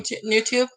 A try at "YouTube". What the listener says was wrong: No, but you said it with an N. You didn't say with the U.